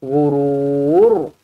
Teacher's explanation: Ra dibaca tebal kerana sebelumnya berbaris depan.